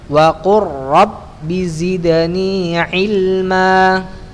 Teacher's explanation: tapi huruf roh dalam bahasa Arab getarannya diminimalisir · getarannya sedikit bukan di ujung lidah tapi di belakangnya · Kalau huruf kita bahasa Indonesia R-nya itu tebal, tapi huruf ra dalam bahasa Arab getarannya diminimalisirkan, kalau bisa sedikit saja.